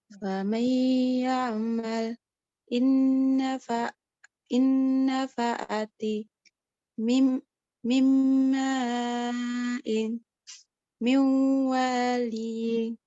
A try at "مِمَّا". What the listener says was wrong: Untuk yang barisan ketiga, itu dilamakan lagi, dipanjangkan lagi. Mimma, apa?